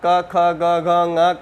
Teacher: पाणिनि शिक्षा के अनुसार क वर्ग का क ख ग घ ङ का उच्चारण स्थान जिह्वा का मूल है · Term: जिह्वा मूल